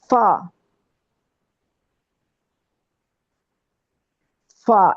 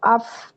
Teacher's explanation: فا جو ہے فا، یہ عام طور پر ہم ٹھیک پڑھتے ہیں، اس میں غلطی نہیں ہوتی کیونکہ اوپر والے دانت نیچے والے ہونٹ کے اندر والے حصے کو ٹچ کر رہے ہیں